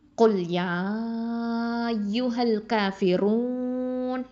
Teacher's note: இந்த ரூ அப்படின்னு சொல்லும்போது இதை ஹெவியாக உச்சரிக்கணும்.